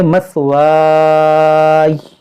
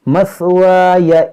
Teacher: یا کو ساکن کریں گے مثوائی، اور اگر ملا کر پڑھیں گے تو مثوایا پڑھیں گے